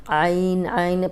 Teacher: عین میں جھٹکے کی آواز نہ آئے، حلق کی طرف پیچھے زبان دبائیں تو آرام سے نکل آئے گا۔